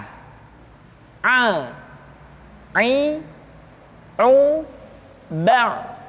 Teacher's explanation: Selanjutnya, pengucapan huruf a dikeluarkan dari tengah-tengah tenggorokan seperti kita mengucapkan huruf h. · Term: huruf ain